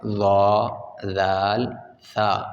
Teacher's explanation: تو یہ نرم حروف ہیں ظا، ذال، ثا، بالکل نرمی سے ادا ہوتے ہیں، ان میں کوئی سختی نہیں، کوئی سیٹی نہیں ہے۔